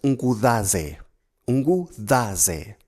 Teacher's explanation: So the second syllable's Z is TH